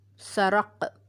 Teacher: اس کو میں نے سرق نہیں پڑھا بلکہ سرق پڑھا ہے، کیونکہ قاف جو ہے وہ حروف قلقلہ میں سے ہے، اور جب قاف ساکن ہوتا ہے تو وہاں پر ہم قلقلہ کرتے ہیں۔ یہاں پر قاف کی آواز رکے گی نہیں بلکہ دوبارہ سے ہلکی سے قاف کی آواز آئے گی۔